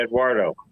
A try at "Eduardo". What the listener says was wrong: Right. You do it with the W in it. Eduardo.